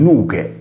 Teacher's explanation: nel logudorese lo stesso lemma si sonorizza in nughe